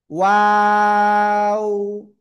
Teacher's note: দুই ঠোঁট গোল হবে, শুরুতে গোল, মাঝখানে দুই দিকে প্রসারিত হবে, আবার শেষে এসে গোল হবে।